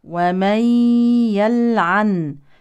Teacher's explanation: نون ساكنه يليها ياء تدغم في الياء ادغام ناقص بغنه